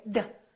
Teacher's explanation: this is a stop because we cannot prolong it we cannot say duh we can say d it's a stop so when we say this hold your tongue behind your upper teeth for the D and keep it there had so don't say had this say had this had this I had this Stop.